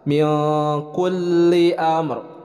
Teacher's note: Min ikhfa, nun sukun bertemu dengan huruf kaf, didengungkan, ditahan 2 harakat.